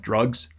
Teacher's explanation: general american english you would expect to get the wedge variant of a vowel like in a word like drugs that vowel in the middle